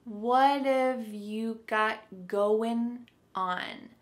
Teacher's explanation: So what and have are going to be pushed together.